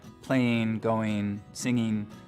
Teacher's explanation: one of the things we start to hear in the Mountain West generally is ing endings pronounced as een, so playing, going, singing, the whole western part of the country.